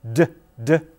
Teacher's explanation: pay attention to where the tip of your tongue is now in english for the tip of the tongue is at the ridge just behind the teeth the so-called alveolar ridge